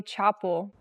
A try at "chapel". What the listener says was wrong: The word is pronounced chapel, not chapel. We cannot use the open ah sound like hot and stop. We have to use the ah sound like black cat. Chapel.